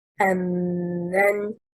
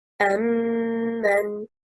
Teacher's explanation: The correct performance stressing on حركة الميم is أَمَّنْ. It is two words, plus an interrogative man. · The last static meme from the first word merged into the first meme of the second word and becomes مشددة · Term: إدغام مثلين صغير